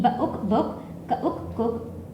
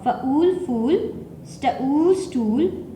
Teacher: book cook was the smaller one, fool stool is the longer one